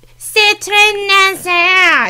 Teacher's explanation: the Canadian way of speaking French, because it's this very, comparatively, it's this way more nasal thing, like high nasal